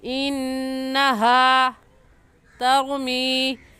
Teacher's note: انہا میں نون مشدد ہے، اور نون مشدد پر ہمیشہ غنہ ہوتا ہے، تو غنہ کر کے پڑھیں گے، اور ایسے کہیں گے انہا ترمی.